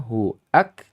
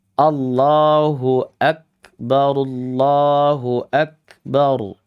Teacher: Kalau sifat hurufnya hamzah qat' ini dibaca dengan sifat huruf rakhawah, maka yang terjadi dia masuk huruf wau.